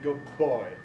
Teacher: so good plus boy gives you a long B